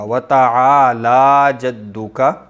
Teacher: تعالی میں لام پر کھڑی زبر ہے، ایک الف کے برابر لمبا ہوگا